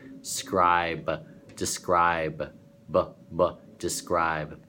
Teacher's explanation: it starts out from the front of your mouth, skra, and goes deep.